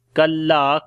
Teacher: kaf we read in light sound and lam we long due to alif madda.